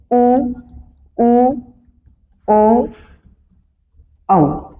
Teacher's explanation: जिनमें होठों की आकृति वृत्त के समान गोल हो जाती है उन्हें बोलेंगे वृत्ताकार स्वर